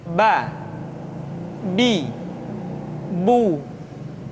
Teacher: Huruf ba dikeluarkan dengan cara merapatkan kedua bibir kita.